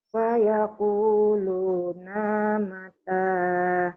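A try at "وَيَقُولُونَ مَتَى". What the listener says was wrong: Bukan pa tapi wa.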